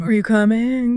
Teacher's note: Are you coming? The voice goes up at the end. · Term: rising, rising intonation